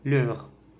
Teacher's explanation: C'est une voyelle antérieure mi-ouverte, arrondie et orale.